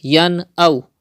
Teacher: So the rule izhar will be done here. That means you have to read without doing gunna, without taking the sound into the nose, like yan aw.